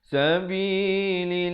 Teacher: perkataan Allah datang sebelumnya baris bawah, kena dibaca nipis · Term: lafzu jalalah